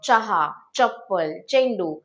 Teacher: जेव्हा च उच्चारायचा असतो, तेव्हा आपली जीभ जी आहे ती टाळूला स्पर्श करते. त्यामुळे काय होतं, चहा, चप्पल, चेंडू हे जे शब्द आहेत ते आपण च म्हणून उच्चारतो.